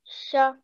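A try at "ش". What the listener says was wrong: Sha. Okay, make sure not to do a jerk. There is a tiny bit of jerk. Just say sha.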